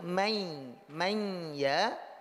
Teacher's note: itu ya-nya dari satu menjadi dua. Secara lafaz dia tetap bertasydid. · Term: idgham naqis